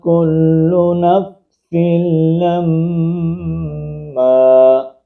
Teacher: اس سین کو آگے ڈائریکٹ ہم لام کے ساتھ ملائیں گے اور پھر میم مشدد کا ہم گنا کریں گے